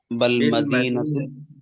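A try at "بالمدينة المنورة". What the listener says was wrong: بالمدینہ بل نہیں، بی حرف با حرف جر ہے نا، بالمدینۃ المنورۃ.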